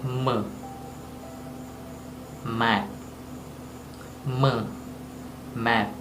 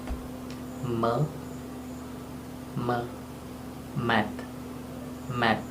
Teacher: Oral passage is blocked by closing the lips. M, mat, closing the lips. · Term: Nasal consonants